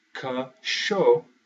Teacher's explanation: the stress simply goes on the second to last, or the penultimate syllable in the word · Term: second to last rule